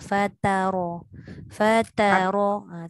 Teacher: Ta nipis. Ro tebal.